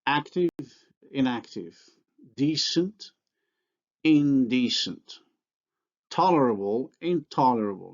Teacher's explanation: The nasal is alveolar before alveolar consonants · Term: nasal assimilation